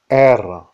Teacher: c'est un R roulé, et c'est le R apical qui est produit en élevant la pointe de la langue vers la base des dents supérieures, près du voile de palais.